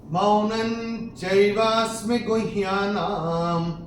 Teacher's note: तीसरे चरण में न के ऊपर अनुस्वार के बाद का अक्षर है च, और अनुस्वार के बाद जब च आएगा तो अनुस्वार का उच्चारण होगा न